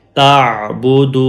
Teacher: یہ واو مدہ ہے، واو long vowel ہے، اس لیے دال کو لمبا کریں گے